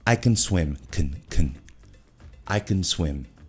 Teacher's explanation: E na afirmativa, eles usam o schwa. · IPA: /ə/